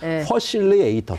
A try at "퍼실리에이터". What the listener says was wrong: F 발음이 안 되는 식이네요. 퍼실리에이터. 못 알아들을 것 같아. 아메리칸 사람들이.